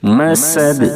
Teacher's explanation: سین کے دائرے میں سیٹی جیسی آواز نکلنی چاہیے، اور وقف کریں گے تو دال ساکن ہو جائے گی، اس صورت میں دال میں قلقلہ ہوگا یعنی آواز لوٹ جائے گی۔